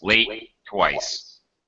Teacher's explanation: we're not repeating the T in twice. Late, twice. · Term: One time T sound